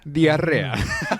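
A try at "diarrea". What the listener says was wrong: You gotta roll the R's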